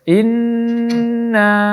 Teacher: jadi bunyi dari na lebih lama daripada gunnahnya. In lebih pendek dari bunyi na-nya. Dengungnya lebih panjang, lebih pendek daripada bunyi mad jaiz di sini.